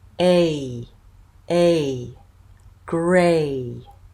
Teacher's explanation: Dynamic it's moving while I'm making that sound a a Gray that's a tense vowel now my tongue is quite tight